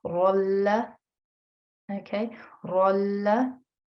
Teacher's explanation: I would change the tanween into a fatha and join it with the la, and in that way there is no nasal sound being created, okay. Very important when there is a lam mushaddad that there is no nasal sound, okay. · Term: idgham